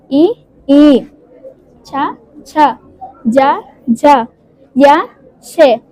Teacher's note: తాలవ్యము అనగా దవడ దవడతో పలికే అక్షరాలు